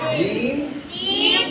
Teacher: நாவின் நடுப்பகுதி மேல்முரசோடு இணையும் போது மேல்முரசோடு இணையும் போது நாவின் நடுப்பகுதி நாவின் நடுப்பகுதி மேல்முரசோடு இணையும் போது மேல்முரசோடு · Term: ஜீம் என்ற எழுத்து